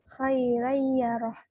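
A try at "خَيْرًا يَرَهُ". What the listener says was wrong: Khoi, jadi harus jelas, bukan khoe. Khoiraya.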